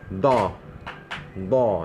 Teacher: Jadi lidah tu yang bahagian tepi tu mesti sentuh gigi geraham belah tepi. Dia tak kisah sama ada kiri dan kanan pun boleh. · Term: huruf dha